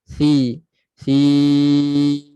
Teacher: Huruf sa keluarkan sedikit hujung lidah. Hujung lidah keluar sedikit daripada sempadan gigi. Si. Sim.